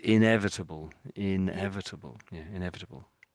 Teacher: the in is sort of quite obvious and slow, and then the rest of it tends to get rushed a little bit